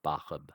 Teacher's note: when we add the suffix, the sa becomes a ha, a light H.